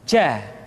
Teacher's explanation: kesalahan yang sering muncul ketika mengucapkan huruf ja adalah mengalirnya nafas